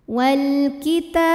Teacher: Kemudian ada hukum alif lam, namanya alif lam qamariyah. Karena alif lam menghadapi huruf qamariyah yaitu kaf, maka lam sukun kita bunyikan dengan jelas. Wal kita, ta matobi'i muqaddar karena ada baris fathah tegak di atas huruf ta.